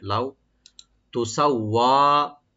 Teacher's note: লাউ এখানে হারফে লিন, এখানে কোনো টান নাই, সফট করে পড়তে হবে